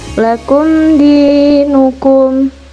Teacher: mim sukun dibaca jelas karena bertemu dengan huruf selain mim dan ba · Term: idhar syafawi